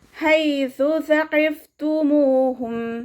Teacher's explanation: മഖ്റജ് വരുന്നത് നമ്മുടെ നാവിൻ്റെ അറ്റവും മേലെ മുൻപല്ലിൻ്റെ അറ്റവും ചേർന്നിട്ടാണ്. നാവിൻ്റെ കുറച്ച് ഭാഗം പുറത്തോട്ട് കാണുന്ന രൂപത്തിൽ വെച്ചിട്ട് കുറച്ച് എയർ പാസ് ചെയ്യണ സൗണ്ടും കൊടുക്കുക കേട്ടോ